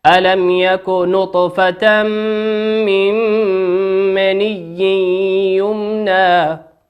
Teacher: نطفة تنوين أتى بعده حرف الميم، والميم من حروف الإدغام بغنة يغن بمقدار حركتين. وقوله من مني نون ساكن أتى بعدها حرف الميم، والميم من حروف الإدغام بغنة يغن بمقدار حركتين.